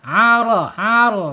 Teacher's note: Getarannya ingat getarannya tidak boleh banyak-banyak ya.